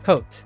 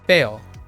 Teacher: lots of northern Americans, they tend to remove diphthongs into single things.